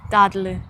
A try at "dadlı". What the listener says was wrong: Dadlı. Yeah.